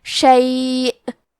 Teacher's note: کلمت شیء پہ رکے تو حمزہ پہ جزم سے رکیں گے